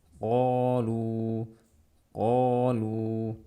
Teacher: tidak boleh membaca lebih dari 2 harokat. 2 harokat saja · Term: mad tabi'i